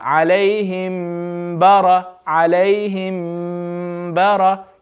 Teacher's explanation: You need to read the mim sakin with ghunna.